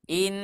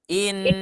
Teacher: ketika gunna dibacakan panjang maka seperti tiga ketukan irama lambat